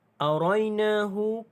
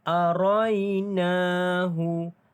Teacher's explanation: Arainahu, kalau kita perhatikan di sini ada mad asli huruf alif dibaca dengan panjang 2 harakat